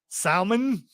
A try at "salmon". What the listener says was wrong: No, because it's pronounced salmon. No, there's no L. The L is silent.